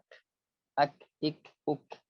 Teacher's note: Dan menghilangkan sifat jahar serta isti'la pada huruf kaf.